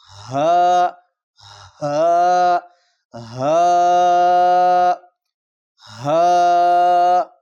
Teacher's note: یہ حروف خلقی جو اقصی حلق ہے، حلق کا بالکل آخری حصہ جو سینے کے ساتھ جڑا ہوا ہے، وہاں سے اس کو ادا کریں گے. ٹھیک ہے، ہا بالکل سینے سے ادا کریں اس کو، کوشش کریں بالکل آخری حصے سے.